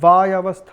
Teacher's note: जहाँ पदादि वकार है वहाँ उसको हम द्वित्व के रूप में अर्थात डबल वकार के रूप में हम लोग उसका उच्चारण करते हैं, वायवस्थ इत्यादि के रूप में।